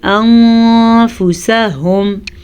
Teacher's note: بِهِ أَنفُسَهُمْ نون ساکن کے بعد فا ہے جو کہ حروف اخفا میں سے ہے تو ہم نون ساکن کو چھپا کے پڑھیں گے اور اس کے ساتھ ساتھ ہم غنہ بھی کریں گے